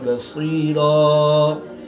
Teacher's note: صاد حرف مستعلیہ میں سے ہے، تو اس کو پوری یعنی موٹا پڑھیں گے